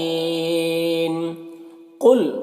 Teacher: قل میں قاف کو پر پڑھیں گے، یہ حروف مستعلیہ میں سے